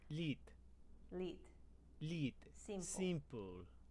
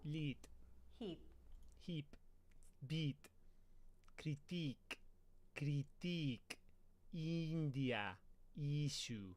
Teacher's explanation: The I vowel sound found in words like lit and simple becomes E in the Spanish accent. From I, you're going to widen the corners of the mouth and bring the jaw up slightly, going from I to E.